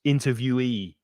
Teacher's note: so the yi at the end is stressed